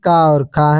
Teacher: जो कंठ ध्वनियां है वो आपकी क और ख है